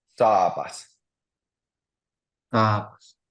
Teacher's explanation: So the first two A's it makes a long sound because there's a double A, and then the second sound is short.